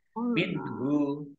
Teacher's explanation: nun sukun bertemu dengan huruf ha izhar dibaca jelas